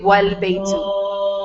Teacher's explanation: When it's in the middle of a speech, the was before it, the alif is skipped and you say wal baytu